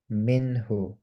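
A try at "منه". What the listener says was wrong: Very good মাশাআল্লাহ।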